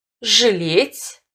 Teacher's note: В отдельных случаях на месте буквы А произносится звук И с призвуком Э, средний между И и Э.